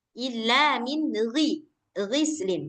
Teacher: Gin dia enggak punya sifat itbak. Jadi ketika dia kasrah maka dia enggak tebal. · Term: Ghain